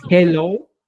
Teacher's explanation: Debes entender que la H es una fricativa glotal aspirada como Hello